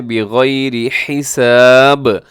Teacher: آخر میں با جو وقف ہوگا تو قلقلہ ہوگا